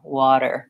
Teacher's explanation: I can feel my tongue lifts behind my teeth when I do the flap water water i tongue lifts up there but just briefly and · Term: flap T